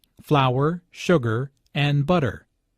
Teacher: Notice that this is a list, so there are short pauses between each item. Notice also that each ingredient is stressed because this information is important.